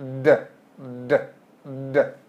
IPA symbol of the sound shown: d